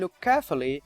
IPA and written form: lʊk keəfli (look carefully)